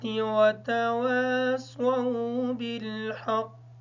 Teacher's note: جو قاف ہے اس پر قلقلہ ہوگا